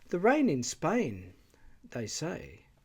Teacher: two projecting clauses, they say, each have their own tone group